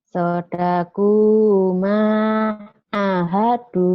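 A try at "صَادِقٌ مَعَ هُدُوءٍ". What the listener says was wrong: A-nya panjang. A-nya panjang kan?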